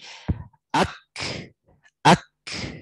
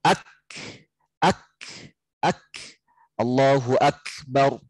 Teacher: ketika lepas lidah di langit-langit itu ada udara yang keluar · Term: hams